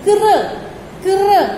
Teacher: जैसे का है, का में हमने नीचे ये लगा दिया तो इसको हम क्या पढ़ेंगे, क्र, क्र, हल्का सा रा का साउंड आएगा, क्र